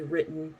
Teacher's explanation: the end of the word like the word written uh but we would say with more of a glottal t